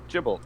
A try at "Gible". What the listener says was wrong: Did you pronounce the G in Gible as a J sound? I'm not normally one to point out ones like that, but I just, it just sounded weird.